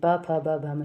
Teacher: जो होठ है हमारे वो आपस में टच हो रहे हैं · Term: ओष्ठ वर्ण